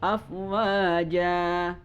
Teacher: Maka ketika ada fathatain afwajan, maka ketika waqaf maka menjadi panjang. Jan menjadi ja, yaitu dibaca minimal 1 harokat.